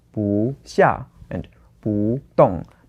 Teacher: We have to change the 不 to the second tone